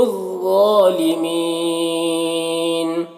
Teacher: ضا کو بھی پر پڑھیں گے، ضا حروف مستعلیہ میں سے ہے۔ اور یہاں پر یا مدہ ہے، یا مدہ کے بعد یہاں پر وقف کریں گے تو نون کا زبر سکون سے بدل جائے گا، تو یہاں پر مد عارض وقفی ہوگا۔